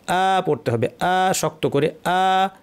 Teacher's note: আছে ছোট একটা আলিফ বা খাড়া জবর আছে তার অর্থ হচ্ছে এই আলিফটা আসলে একটা হামজা এবং হামজার সাথে একটা মাদ বা টান আছে